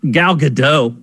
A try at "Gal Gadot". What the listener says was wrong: Gal Gadot. I've heard her pronounce her name. It's Gal Gadot. The T is not silent. The T is there.